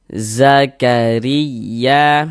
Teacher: Baris satu di bawah huruf harakat kasrah atau tanda baca kasrah. Maka huruf ro ini dibaca tipis, dibaca tarkik.